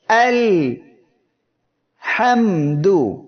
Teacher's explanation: মিম অক্ষরটি উচ্চারণের সময় আওয়াজটা একেবারে বন্ধ হচ্ছে না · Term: তাওয়াসুদ